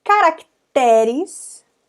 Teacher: penúltima sílaba é mais forte